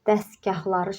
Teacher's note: Burada s-t hərf birləşməsi var və s-t hərf birləşməsindən sonra samit gəlib bu t düşəcək. Dəstgahları şəklində tələffüz olunacaq.